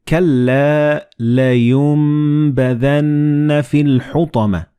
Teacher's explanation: And this meme appears in the middle of the word. So the noon and ba, when they follow one another in the same word, you don't pronounce noon, but you pronounce meme.